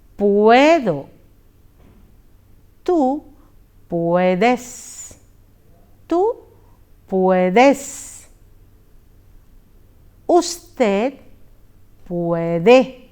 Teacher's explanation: one vowel changes to a double vowel, which is pronounced together. In poder, the O changes to ue, O to ue. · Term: diphthong